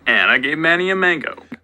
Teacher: This one's a little less distinct because F0 just kind of rises on through it. You may hear that Manny is sort of prominent or accented in some way.